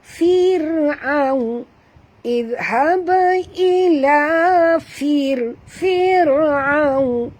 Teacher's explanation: Fir'aun, ra sini tak boleh baca tebal. Ra bila mati huruf sebelumnya baris bawah, sama seperti ra baris bawah, kena baca tarkik tipis. Jangan baca fir'aun, tak betul ya.